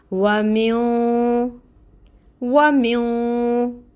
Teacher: नाक में आवाज़ को ले जाकर छुपाते हैं 2 हरकत के बराबर